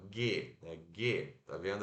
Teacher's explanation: O G, observa que a sua língua, G, ela encosta, as costas da sua língua encostam no céu da boca